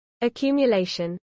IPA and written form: əˌkjuːmjəˈlɛɪʃən (accumulation)